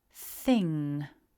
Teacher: don't try to pronounce a big hard g at the end. It's not a g, it's just that ng ending.